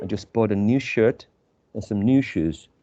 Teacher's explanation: so new and shoes i guess they are at the same level in terms of prominence or emphasis